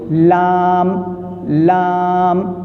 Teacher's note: ان 4 دانتوں سے لام نکلے گا. زبان کا کنارہ ثنایا ربائی ناب اور زواحی کے مسوڑے اس سے لام نکلتا ہے